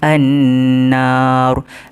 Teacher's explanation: nun di atasnya ada tasydid, dia memiliki hukum wajibul gunnah, iaitu wajib dengung